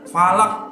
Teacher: Nah, ini harus memantul falaq karena qalqalah ya. Falaq. Jangan falak.